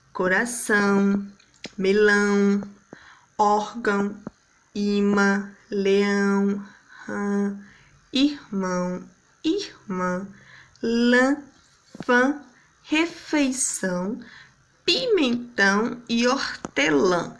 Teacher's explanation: parte do som sai pela boca a parte do som sai pelo nariz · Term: vogais na, vogais nasais